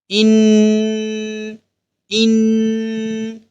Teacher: یعنی نون پڑھتے ہوئے ہم اپنی آواز ناک میں چھپا لیں گے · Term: غنہ